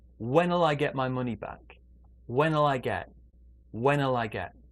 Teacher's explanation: so when will can become wennell